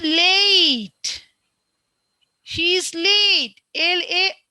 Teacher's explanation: in this vowel sound there are two vowels, A and E, combined and says A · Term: diphthongs